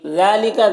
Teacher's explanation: ذال میں کھڑا زبر ہے، 1 الف کے برابر کھینچیں گے